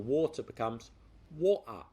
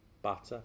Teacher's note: Replacing the T sound with a glottal stop. The glottal stop is a sound made from the throat rather than the T that comes from the front of the mouth.